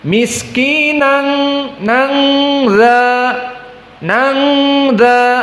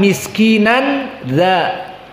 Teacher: harusnya Nun asakinah jelas nunnya disamarkan menjadi dengung menjadi Eng dan makhrajnya di sini keluar dari makhraj Nun kepada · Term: ikhfa Hakiki